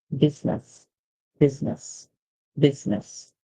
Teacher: in business, the U makes a sound like short I, so we hear the A, and then the S makes a sound like Z. Remember, when S comes before a vowel or after a vowel, a lot of times it can make a sound like Z or Z.